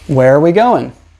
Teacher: depending how quickly I say it it might sound like wearer wearer or it might just sound like where